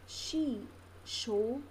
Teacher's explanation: When person utters words sky, she, show, the tip of the tongue may be down behind the lower front teeth, and the blade of the tongue is normally close to the back part of the alveolar ridge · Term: Palato-alveolar